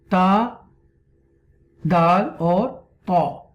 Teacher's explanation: Pronounced from the tip of the tongue and the roots of the upper front teeth.